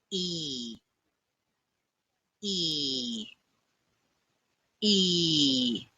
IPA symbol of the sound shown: iː